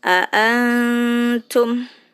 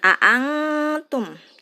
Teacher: dengungnya nya tidak terlalu dengung jauh